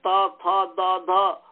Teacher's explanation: जिहवाग्र का संबंध है दांत के साथ